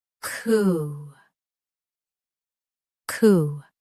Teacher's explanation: Say coup with a clean K start and a long ooh sound.